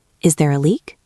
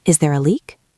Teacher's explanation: My voice goes up.